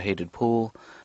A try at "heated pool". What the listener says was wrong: You said hated pool. Hated, not heated. No, that's a slip. You made a slip, but you said hated because we were talking about Mom.